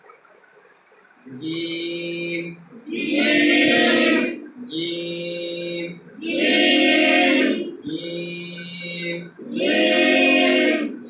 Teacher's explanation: অবশ্যই আমার জিহ্বার মধ্যখানটা হ্যাঁ পুরো তালুর সাথে লাগে